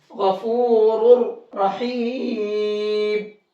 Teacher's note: غفور کو موٹا کر کے پڑھیں گے اور ان دونوں را کو بھی موٹا کر کے پڑھیں گے